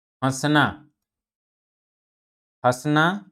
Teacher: अनुनासिक का उच्चारण मुख और नासिका, आप लोग ध्यान देंगे, मुख और नासिका दोनों से मिलकर निकलता है। जैसे उदाहरण के माध्यम से हम समझेंगे, हंसना, हंसना, पांच, ऐसे शब्दों या ऐसे वर्णों का जब हम उच्चारण करेंगे तो ये अनुनासिक कहलाते हैं, ठीक है।